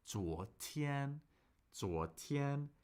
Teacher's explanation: that's a second tone, first tone. We have a rising tone, then a high, flat, steady, unchanging tone.